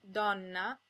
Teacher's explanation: Ino if the o or the E is an distressed syllable it's sometimes pronounced open o as in Donna